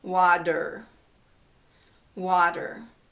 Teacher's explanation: Okay, there's a vowel before the letter T, and there's a vowel after the letter T. And the vowel before the letter T is in the stressed syllable. It's a stressed vowel. And the vowel after the letter T is unstressed.